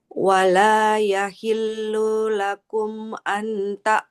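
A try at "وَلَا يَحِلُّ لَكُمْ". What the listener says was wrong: Lamnya nggak boleh panjang, Ibu. Wala yahillu lakum.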